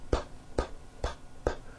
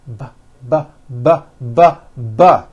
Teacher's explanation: So we say the P sound and the B sound are paired consonants. They are produced exactly the same way here in your mouth, but the P sound has no voicing and the B sound, b, b, does have voicing.